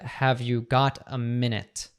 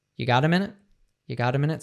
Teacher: so he dropped the auxiliary have